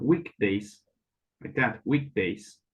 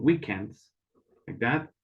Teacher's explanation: Now, if you can see, with these two words, we have the very first beginning, week, but the end sounds very, very different because here we have weekdays, like that, weekdays. That K does not sound so strong because the D sounds stronger than the K.